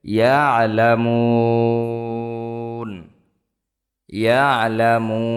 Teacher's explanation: এখানে থামলে অক্ফ করলে তিন আলিফ টান হবে